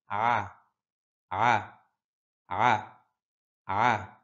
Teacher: আইন কণ্ঠনালীর মধ্যখান থেকে